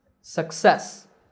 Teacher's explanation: both of these words the stress is on the first syllable in the next two words the stress is on the second syllable